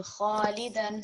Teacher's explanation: So kha is going to be thick and broad.